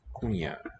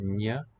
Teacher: The N, like in Spanish, señor, is a palatal ña